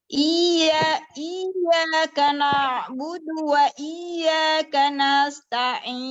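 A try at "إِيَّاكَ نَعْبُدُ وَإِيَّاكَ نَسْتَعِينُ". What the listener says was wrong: Ini udah nggak tebal, tapi tamtid dinanya. Ini tamtid.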